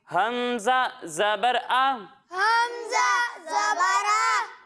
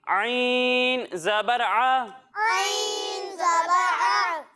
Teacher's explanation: जब हम हमजा की अदायगी करेंगे तो इसे हम हलक के निचले हिस्से से पढ़ेंगे, लेकिन जब हम आइन की अदायगी करेंगे तो इसे हम हलक के दरमियाने हिस्से से पढ़ेंगे।